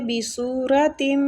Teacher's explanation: سو کے آگے وہ مد ہو رہی ہے، را زبر کی وجہ سے پور پڑھیں گے